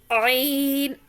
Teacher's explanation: عین حلق کے درمیان حصے سے عین ادا ہوتا ہے